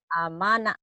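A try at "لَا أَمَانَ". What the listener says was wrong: bukan Bu, kan ada la-nya. Tadi la-nya tadi nggak kedengerannya amanah doang. La amana, la amana, kemudian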